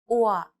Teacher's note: It sounds like the yua in words like pure or demure. Be sure to pronounce it short. อั่ว Now you try.